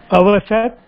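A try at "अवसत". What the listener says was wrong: The pronunciation is little wrong here. It's the avasat in Prathama Purusha Ekavachanam, and Madhyama Purusha Bahuvachanam it is avasata. If you pronounce the same, there is no difference.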